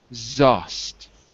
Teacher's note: It's better, but I'm hearing a sh, not a z.